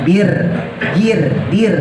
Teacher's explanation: yang sukun ya dibaca tipis kalau sebelumnya harakatnya kasrahnya bir Dir Nah itu merenges tipis Ya baik dari segi harakat